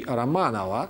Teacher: given the way Russian people tend to pronounce the unstressed O's, when in pronounced form, not in written form, the same surname already possesses all the features of synharmonism